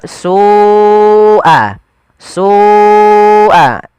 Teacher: lafal su wajib kita panjangkan sepanjang 4 atau 5 harakat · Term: mad wajib muttasil